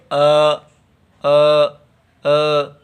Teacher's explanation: कैसे पीछे कंठ स्थान है जिकवा मूल करण है और संवृत प्रयत्न है